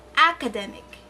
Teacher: The stressed syllable there is the syllable de.